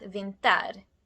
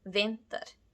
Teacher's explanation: in vinter, the first part, vin, is louder and longer than the ending. It's not vinter, it's vinter. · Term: stressed syllable